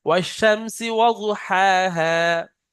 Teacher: ওয়াজু পড়লে জোয়াদের উপরে তাসদিদ হয়ে যাচ্ছে, জোয়াদের উপরে কিন্তু তাসদিদ নেই।